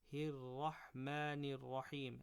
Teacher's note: This Ra and this Ra are both full mouth, so make them as full as you can.